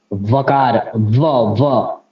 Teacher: वकार का जो उच्चारण होता है वो दंतोष्ठ से होता है